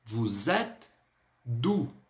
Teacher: E com circunflexo no francês, ele sempre vai ter um som bem aberto, similar até do agudo